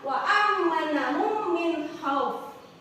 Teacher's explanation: Nah, idgham mutamasyilain ini yaitu jika ada mim sukun bertemu dengan huruf mim yaitu idgham mimi atau idgham misli. Nah, cara membacanya masukkan huruf mim ke dalam huruf mim disertai gunnah